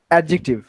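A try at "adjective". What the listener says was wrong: ডি উচ্চারণ হয় না, তাই তো? অ্যাডজেক্টিভ।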